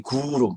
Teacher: 구 할 때 이제 입천장 뒤가 좀 울리고, 루 할 때 혓바닥이 막 꼬입니다.